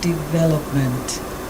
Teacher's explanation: a four syllable word second syllable is where you put your emphasis